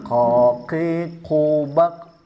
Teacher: murni tanpa ada nafas yang keluar